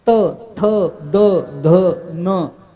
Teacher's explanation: आतून जीभ जोर लावावी लागते दातांवर आतल्या बाजूनी, तर त म्हणता येतं. थ, द, ध, न आतून जोर लावावा लागतो. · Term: दंतव्य